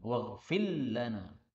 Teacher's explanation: Maka diidghamkan, waghfir lana, ra-nya hilang.